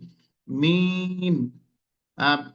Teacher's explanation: ঠোঁটের উভয় শুকনো অংশটা হচ্ছে মিম